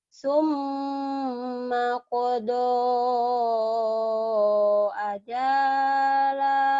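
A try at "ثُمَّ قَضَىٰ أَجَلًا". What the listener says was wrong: Bukan. Kenapa jadinya panjang? Iya barisnya panjang ini. Barisnya cuma seni aja. Nggak ngaruh nih. Baris ini panjang. Kamu mungkin terpengaruh panjangnya baris ini. Ini sama aja. Baru panjang patah itu kalau ada alifnya.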